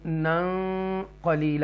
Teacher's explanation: یہاں ثم گنہ کریں گے، باقی ہے واو مدہ یہاں پر بھی ہے، واو مدہ یہاں پر بھی ہے، اور یہاں پر اظہار کریں گے نون ساکنہ کے بعد حروف حلقیہ میں سے عین ہے، نون کو کلیئر پڑھیں گے من عند اللہ، اور یہاں پر بھی واو مدہ ہے، اور یہاں پر ہم گنہ کریں گے حروف اخفا میں سے ہے، نون ساکنہ کے بعد قاف ہے، قاف جو ہے حروف اخفا میں سے ہے، تو نا قلیلہ ہم پڑھیں گے۔